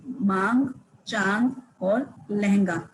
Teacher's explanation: हवा नाक और मुंह से निकलती है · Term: अनुनासिक